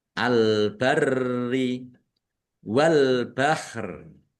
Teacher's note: Albarri alif lam qamariah ditandai lamnya dibaca sukun. Rnya dibaca dobel, ada tasdidnya ditekan dan ditahan biar tampak dobelnya.